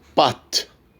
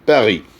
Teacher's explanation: A est long dans Pâtes, bref dans Paris.